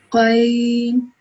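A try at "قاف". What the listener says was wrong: Okay, this is Ghain. This one is Qaf.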